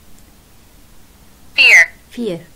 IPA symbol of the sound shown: iə